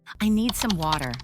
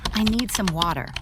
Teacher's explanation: In American English, the T sound often changes, especially when it's between two vowel sounds. Instead of a clear T, it sounds more like a soft D. This makes speech flow more smoothly. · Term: T sound changes